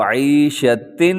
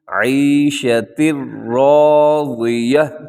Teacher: تو عیشتن نہیں پڑھنا آپ نے، دو زیر کا یہاں ساؤنڈ نہیں ہوگا بلکہ تا کو ڈائریکٹ را سے ملائیں گے. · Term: ادغام تام